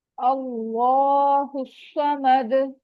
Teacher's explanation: स्वाद heavy letter है, उसको हैवी करके पढ़ेंगे, और वही दाल पे रुकते वक्त सकून आ जाएगा, तो यहाँ पर भी कलकला होगा, स्ट्रॉन्ग कलकला।